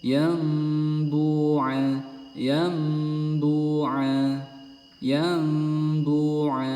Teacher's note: jadi nun sukun Nun sukunnya ini diganti menjadi Mim